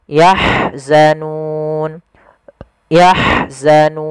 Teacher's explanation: ha alirkan, dia punya sifat rohawa, aliran nafas dan hamas.